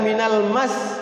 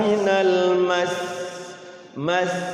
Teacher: di sini nih Kalau enggak salah tuh ada wakaf ya nah cara mewakafkan atau memberhentikan Sin yang bertasid sama ditahan juga